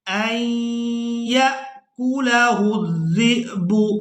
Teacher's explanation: زال کو حمزہ ساکن کے ساتھ ملانا ہے تو جھٹکے کے ساتھ ادا کرنا ہے